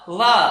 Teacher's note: तो लिप्स और अपर टीथ दोनों मिलकर के जो साउंड निकालते हैं वो लेबियोडेंटल साउंड होती है।